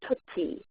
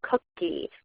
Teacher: a child takes a sound that's produced typically in the back of their mouth, a g sound, and produces it in the front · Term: velar fronting